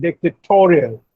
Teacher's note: And dictatorial, the stress is on toe.